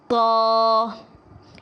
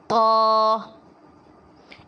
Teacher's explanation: طا، اس کو باریک نہیں پڑھنا، اگر ہم باریک پڑھیں گے تو یہ تا بن جائے گی جو کہ درست نہیں ہوگا۔ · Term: موٹے حروف